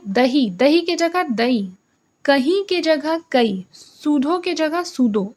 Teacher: जितने भी अधिक उच्चारण करने वाले शब्द हैं, जैसे जो महाप्राण हैं, वह अल्पप्राण हो जाएंगे